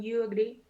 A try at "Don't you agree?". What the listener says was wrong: De nuevo, un poquito más cantadito porque es una yes no question.